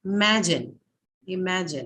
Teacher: the second syllable is the one that is stressed totally you have three syllables in imagine and the stresses on